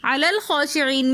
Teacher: علی الخاشعین میں لام کو ہم دوسرے لام کے ساتھ ملا کر پڑھیں گے. درمیان میں حمزۃ الوصل ہے جو درمیانی کلام میں آنے کی وجہ سے گر جائے گا. خا کے اوپر کھڑا زبر ہے تو اس لیے اس کو ایک الف کی مقدار کھینچ کر پڑھیں گے.